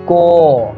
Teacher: क जो है ये तुरंत समाप्त हो जाता है, उसके अंतिम में जो अ है वही हम लोगों के मुख से निकलता रहता है